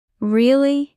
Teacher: When you say really, raise your intonation at the end. Voice goes up. This makes you sound interested.